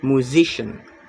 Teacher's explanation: The stress is on the second syllable musician. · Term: stress shifting suffix